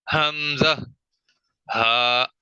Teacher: اچھا، اس کے بعد دو حروف ہیں حمزہ اور ہا، یہ اقصی حلق سے ادا ہوتے ہیں، یعنی گلے کا وہ حصہ جو سینے کی طرف ہے، وہاں سے یہ دونوں حروف ادا ہوتے ہیں، حمزہ، ہا۔